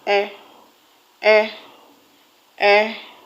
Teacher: It is the weak or reduced form of a vowel in an unaccented position. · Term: short sound